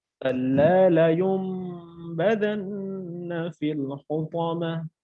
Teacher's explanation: নুন সাকিনের পর আমার বা আসছে, এটা হলো ইকলাবের হরফ। আর যখন ইকলাবের হরফটি আসবে তখন আমরা কি মিম দ্বারা পরিবর্তন করে পড়ব।